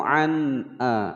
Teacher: ada nun sukun bertemu hamzah dibaca jelas karena ini adalah hukum bacaan idhar